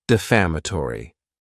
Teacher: this word has five syllables and the stress is on that second syllable